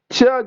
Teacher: Front of the tongue जो होता है अपर मोलार में जाकर धक्का मारता है, ऊपर वाले तालु को सटता है जाकर और हवा दोनों तरफ से निकलती है।